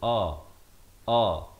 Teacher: Lafaznya hamzah di pangkal kerongkong